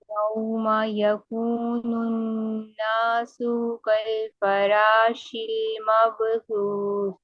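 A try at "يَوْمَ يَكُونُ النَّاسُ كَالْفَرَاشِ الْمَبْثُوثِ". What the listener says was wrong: رو کو بھی ہیوی کرنا ہوگا، رو شل۔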